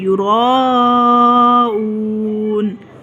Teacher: واؤ ساکن ہے، ما قبل پر پیش ہے تو ہم اس حمزہ کو ایک الف کے جتنا کھینچیں گے، یراؤون۔ یہ مد ہے، اس کو تو لمبا کریں گے، واؤ ساکن ہونے کی وجہ سے حمزہ کو بھی کھینچ کر ادا کریں گے، ہم یراؤون۔